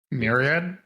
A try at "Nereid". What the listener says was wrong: No, with an N. With an N. Nereid. Nereid.